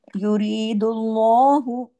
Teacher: अल्लाह के नाम में लाम को हैवी करना है। युरीदुल्लाहु मोटा करके पढ़ना है। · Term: लाम जलाला